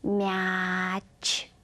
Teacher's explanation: в слове мяч Давайте произнес это слово долго и распев мяч тянем звук э после м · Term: мягкого гласного звука э